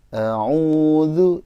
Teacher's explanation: A'udzu, jadi u-nya harusnya lebih naik, ya.